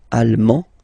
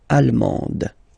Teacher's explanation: you don't pronounce the final D, but then you pronounce it here for the feminine form